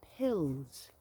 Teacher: she was trying to say the word pills p-i-l-l-s but for her the consonant cluster was basically impossible